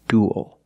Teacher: it ends with a dark L because the L is after a vowel at the end of a word